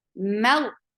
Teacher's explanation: The sound is short, but as you will touch lafz jalala, your last part of your tongue should be lifted up to make this lam heavy. Mal, but keep meme light.